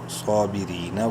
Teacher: را کو باریک پڑھنا ہے, صاد کو بولڈ کرنا ہے, ایک برابر لمبا کرنا ہے